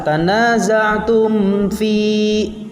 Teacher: karena mim mati bertemu dengan fa, maka mimnya dibaca dengan jelas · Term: izhar syafawi